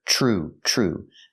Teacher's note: make the sound CH like chicken plus the r